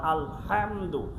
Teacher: কারণ বাংলাতে মনে করেন আলহামদু, এই যে একটা শব্দ, এই শব্দের মধ্যে হা, এটা হলো এই হা গলার থেকে কণ্ঠনালীর মধ্যখান হইতে উচ্চারিত হয়